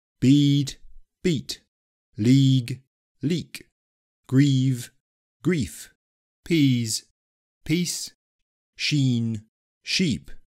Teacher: So you can hear that the first column was longer than the second. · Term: pre-fortis clipping